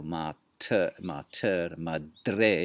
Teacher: If you say that, you'll notice the T and the D, that's dentals insofar as they have formed the sound.